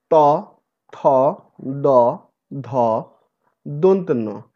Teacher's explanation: সেগুলো সব দন্ত অর্থাৎ দাঁতের একেবারে উপর পাটির দাঁতের গোড়ায় গিয়ে লাগবে, সেটিই হচ্ছে দন্তমূল। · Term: দন্তবর্ণগুলো